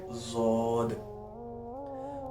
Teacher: जुबान की करवट जब बाए या दाए तरफ की दानों से लगे तो जद अदा होता है